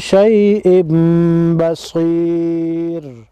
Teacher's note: تنوین کے بعد اگر حروف یرملون میں سے با ہو تو یہاں پر اقلاب ہوگا اور علامت کے طور پر یہاں پر چھوٹا سا میم لگا ہوا ہوتا ہے اور اس پر غنہ بھی ہوتا ہے